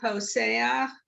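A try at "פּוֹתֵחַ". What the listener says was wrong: So hold on, so that is the older pronunciation, the tav is, there's no sav in it, so poteach, exactly.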